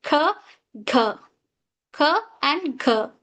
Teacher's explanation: back of the tongue touches the soft pallet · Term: Wheeler sound, velar sound